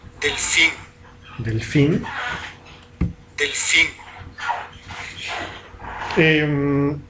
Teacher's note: una D oclusiva, una postdental sonora oclusiva, porque está en posición inicial absoluta